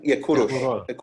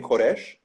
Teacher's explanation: Kurush became Koresh in Hebrew because in Hebrew the vowels u and o are interchangeable